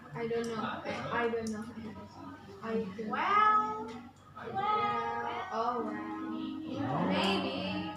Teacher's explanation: Jadi tidak yakin. Jadi kan naik, turun, naik. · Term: rise intonation